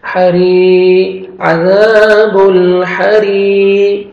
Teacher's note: را کے نیچے کسر ہے اور یا مد ہے 1 سیکنڈ را کو کھینچنا بھی ہے یا ساکن سے پہلے کسر ہے.